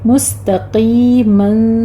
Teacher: آپ نے تا کو باریک رکھنا ہے, قوف کو پر پڑھنا ہے, مستا نہیں کہنا.